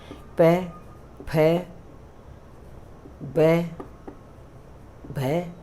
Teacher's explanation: आप जब ये वर्ण बोलेंगे ना तो दोनों होठ टच हो रहे हैं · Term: पवर्ग